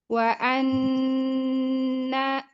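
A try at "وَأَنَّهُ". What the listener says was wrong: Hamzah tahqiqkan lagi. Hamzahnya nggak boleh ikhtilas, harus tahqiq jelaskan lagi hamzahnya. Wa annahu la ikhtilas.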